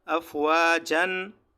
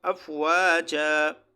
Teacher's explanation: یہ دو زبر الف سے تبدیل ہو جائیں گی، یہ تنوین الف سے تبدیل ہو جائے گا. جس طرح آپ جیم الف زبر جا کی آواز نکالتے ہو تو یہاں وقف میں بھی جا کی آواز آپ نکالو گے، جیسے افواجن تو وقفاً افواجا، یہاں اس کی تنوین ختم ہو جائے گی، یہ الف سے تبدیل ہو جائے گا.